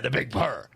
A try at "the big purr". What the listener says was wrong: You got to roll the R, though, at the end. The big purr.